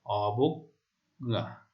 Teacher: মধ্য অ বা ব এর উচ্চারণ ও এর মতো হচ্ছে